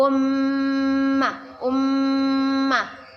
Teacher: mim bertasydid kita baca dengan berdengung dan ditahan